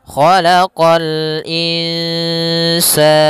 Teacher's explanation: Kha isti'la, huruf kha pangkal lidah kita terangkat. Khalaqa sama qa juga huruf isti'la pangkal lidah terangkat